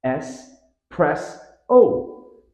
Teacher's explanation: there's no X sound in espresso